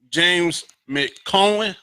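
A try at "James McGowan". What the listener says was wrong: Oh, close. Close. Close. Use the G. But it's MCC, so it's McCowan.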